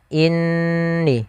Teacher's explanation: Nun bertasydid sama kita hukumi dengan ketika adanya mim bertasydid, yaitu hukumnya sama, yaitu kita menahan suara gunnahnya sepanjang 2 harakat. Maka inni, jangan langsung inni.